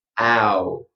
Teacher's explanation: So you see I start very wide, and I bring it all together and ow.